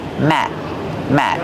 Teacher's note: We don't release the sound.